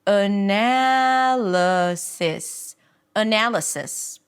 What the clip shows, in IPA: əˈnæləsɪs